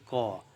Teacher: जीभ का ऊपरी भाग तालू से जाके टकराता है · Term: स्पर्श व्यंजन